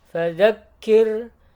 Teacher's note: Baik, kemudian kirnya dibacanya tipis saja. Dia ro mati sebelumnya berharokat kasroh, maka dibacanya tipis